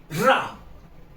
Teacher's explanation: जीवा हमारी कंपन कर रही है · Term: प्रकंपित व्यंजन